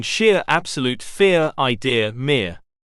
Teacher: this diff thong starts a little bit closer than the vowel in bit and bean it then Glides into the central schwar position